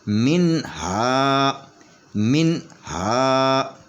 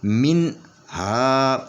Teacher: یہ نون کے اوپر غنہ نہیں ہونے دینا ، من ہا، ایسے آواز کٹ جائے گی، من ہا۔ آگے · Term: اظہار